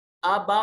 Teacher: یہ بڑی مد ہے، 3 سے 4 الف کے برابر اس کو لمبا کریں گے